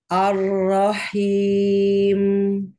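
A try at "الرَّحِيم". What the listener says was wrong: Ar-Rahim. Jadi dari awal jangan jangan huruf hamzahnya jangan dipantulkan ke langit-langit, bukan ini kalau ini pangkal lidah udah naik duluan nih. Enggak aro tapi ya. Ar-Rahimi.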